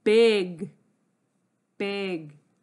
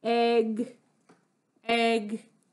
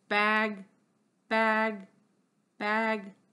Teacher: tongue up so if my hand is my tongue my front my tongue tip is down and the back of my tongue is up my voice is on it's a buzzy sound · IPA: /g/